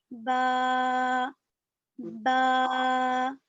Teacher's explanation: با دونوں ہونٹوں کے گیلے حصے سے نکلتا ہے